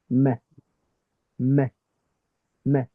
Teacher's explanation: The first component is from the mouth. That is the 2 lips touching against each other, pressing against each other. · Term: meme